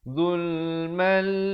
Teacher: Tanwin bertemu lam. Asalnya zulman, tapi bila datang lam jadi zulmal. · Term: idgham bila gunnah